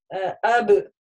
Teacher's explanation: если я скажу аб на сукуне отдельно, то вот эта калькара проявится, в удвоении она не будет проявляться.